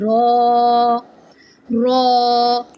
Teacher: raw comes when the tip of the tongue touches the upper hard palate